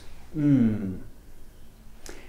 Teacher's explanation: The /m/ sound is called the “bilabial nasal,” which means that you use both of your lips and the air comes out your nose.